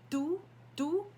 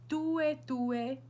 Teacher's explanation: Rather than saying T, you're almost saying a D, tu, but there's still a hint of T in there. It's called a dental T.